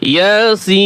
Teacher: ইয়া এক আলিফ টান হবে, সিন চার আলিফ টান হবে